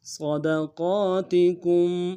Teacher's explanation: صاد کو موٹا ادا کرنا ہے، دال کو نرم سے